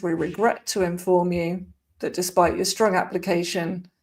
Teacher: full of schwas, weak forms. And we've also got our glottal T's